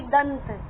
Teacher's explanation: उच्चारण से ही पता चल रहा है कि दंत न की ध्वनि आ रही है, क्योंकि अनुस्वार के बाद त है और त वर्ग का पंचम वर्ण हो गया न।